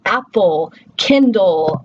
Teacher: And we talked about the LE spelling pattern and how when we would translate that in IPA, it would be a schwa and then an L